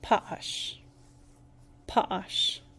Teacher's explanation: There are actually two short vowels right next to each other, but they're separated by that glottal stop, which means that they're really shortened.